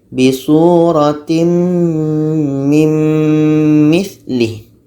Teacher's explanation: Tanwin masuk kepada bunyi mim, bunyi tanwin hilang.